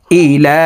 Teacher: এখানে লাম হরফের উপরে খারা জবর থাকার কারণে এই লাম হরফকে একালিফ টানিয়ে পড়ব